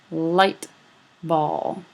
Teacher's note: Ball having a more velarized articulation.